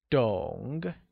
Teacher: understand translates as dong and is said with a falling rising tone